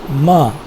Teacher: ma, is a bilabial sound and it is nasal. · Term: nasal sounds